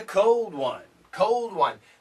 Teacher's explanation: Very weak D, it's there. There is a D, but it's very weak.